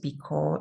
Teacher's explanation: you default to your Ukrainian O sound. So it's very closed, because, more like because.